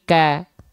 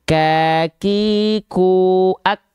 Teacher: Kakiku ak tuh dia tertahan dulu kan, nggak nggak begitu kan, suaranya nggak mengalir, suaranya tertahan sehingga si nafas ikut hanya berupa percikan nafas saja